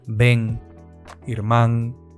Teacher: al final de palabra se pronuncia distinto que en castellano. Se pronuncia con una nasal velar, nga, como si después fuese a venir una G.